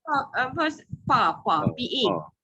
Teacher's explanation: bunyi pa je. Pa pakai bibir dua-dua.